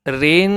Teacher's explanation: Ra has double kasra. Sound is light. And second thing, Ra has tanween, double kasra, tanween, followed by ikhfa letter.